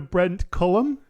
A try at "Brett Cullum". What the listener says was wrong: Brett, No N.